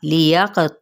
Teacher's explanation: आइन को वैसे हलक से अदा करेंगे लेकिन हरकत को लंबा नहीं करेंगे